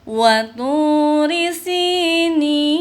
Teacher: maka dibaca 3 alif ya, maka dibaca lebih panjang daripada mad tabi'i. Nin 3 harokat ya. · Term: mad arid li sukun